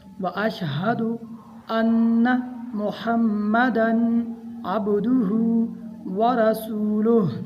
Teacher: حمزہ کو نون کے ساتھ ملانا ہے، یہاں پر ہا کو بھی ظاہر کر کے پڑھنا ہے۔